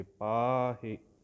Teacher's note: ਪੱਪੇ ਕੰਨਾ ਪਾ ਲੰਬਾ ਕਰਕੇ, ਹਾਹੇ ਸਿਹਾਰੀ ਹੈ ਸੰਕੋਚ ਕੇ